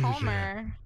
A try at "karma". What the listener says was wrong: L'd that word. The hard L on karma.